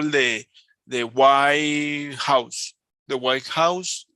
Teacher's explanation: the emphasis is in the characteristic, the adjective.